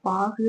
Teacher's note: சொற்களின் இறுதியில் வரும்பொழுது தன்னுடைய ஒரு மாத்திரை அளவிலிருந்து அரை மாத்திரையாக குறைந்து ஒலிக்கும் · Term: குற்றியல் உகரம்